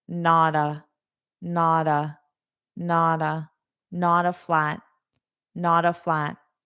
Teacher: So instead of saying not a, not a, not a, I'm going to pronounce the T as a D, and I'm going to say these two as one word.